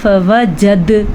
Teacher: ہم نے یہاں پہ قلقلہ بھی کیا کیونکہ دال کے اوپر آ گیا ساکن